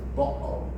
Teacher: instead of pronouncing the T here, bottle, they pronounce it here with the glottis. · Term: glottal stop